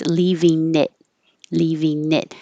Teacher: The T changes to a D because it's between two vowels.